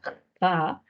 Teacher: tenemos el sonido fricativo velar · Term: fricativa velar